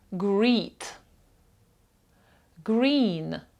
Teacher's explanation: подвійне і читається як довге і з двома крапочками у транскрипції